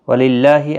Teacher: اللہ کا لام اس زیر کی وجہ سے باریک پڑا جائے گا، اس کے اوپر کھڑی زبر بھی ہے، ایک الف کی مقدار کے برابر کھینچ کر پڑا جائے گا۔